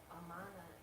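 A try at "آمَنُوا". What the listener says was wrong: Wrong. No. See, amana there's no elongation at the beginning. It's amana. The elongation is after the meme. This is amanu. So the elongation is at the beginning in both sense. Amanu, aminu.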